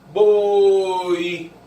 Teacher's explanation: É uma semivogal. Nesse caso, o som de I não fez a boca abrir. Não. A boca foi fechando e o I apareceu.